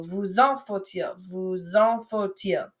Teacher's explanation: we link that vous and that en with a Z sound. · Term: liaison